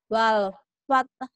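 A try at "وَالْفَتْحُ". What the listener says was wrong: Ya, masih kurang ha kecilnya ya, Bu. Ha. Ha. Wal fath. Iya, tah. Coba bilang tah. Tah. Wal fath. Wal fath. Iya, ha-nya itu dimatikan. Wal fath.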